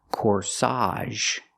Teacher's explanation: Put the stress on the second syllable.